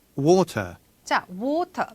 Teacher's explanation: 모음과 모음 사이에 T를 제대로 살려줘서 발음을 했어요. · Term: 영국식 영어